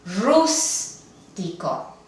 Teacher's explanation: la sílaba tónica no es la penúltima